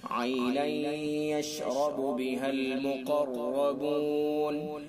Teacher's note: اور یشرب را کے اوپر زبر اس لیے را کو پر پڑھیں گے.